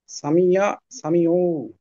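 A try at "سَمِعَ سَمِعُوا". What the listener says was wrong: হ্যাঁ, উতে একটু টান হবে। হ্যাঁ, সামিআ, সামিউ।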